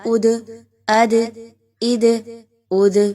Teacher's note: اگین حروف قلقلہ میں سے ہے، آپ نے اس کو ہلا کے پڑھنا ہے ساکن کرتے ہوئے